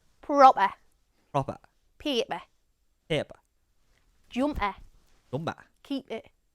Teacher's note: Moving on to consonant sounds and a glottalized P, which is often present in a Geordie accent. Now this glottalized P will happen when a P is between two vowel sounds. For example, in the following words and phrases: proper, paper, jumper, and keep it.